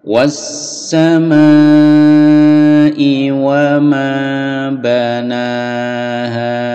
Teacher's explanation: Was-sama'i pendek, wa ma-nya yang panjang.